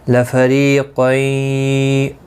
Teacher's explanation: را زیر کی وجہ سے باریک پڑھا جائے گا. قاف مستعلیہ ہے، پر پڑھا جائے گا. · میم ساکن کے بعد لام آیا ہے، اظہار شفوی ہوگا، گنہ نہیں کریں گے. لفریقین ری یا مدہ ہے، ایک الف کی مقدار کے برابر کھینچ کر پڑھیں گے. باقی کسی بھی حرکت والے حرف کو کھینچنا نہیں، را زیر کی وجہ سے باریک پڑھا جائے گا.